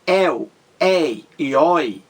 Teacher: quando você pronuncia réu ei herói a sua boca ela abre mais ela fica mais aberta a boca da gente entendeu para saída do ar quando você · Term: ditongo é aberto